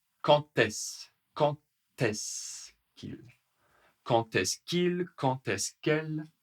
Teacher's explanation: Attention à la prononciation qui va être très rapide, parfois, et qui aura un peu comme une liaison entre le D et le E.